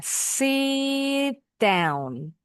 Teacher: Huruf T-nya jangan di dituntasin bunyinya. Sit down. Didekatin ke bunyi D-nya.